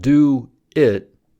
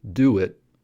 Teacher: if the first vowel sound is round like U the inserted sound is W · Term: intrusion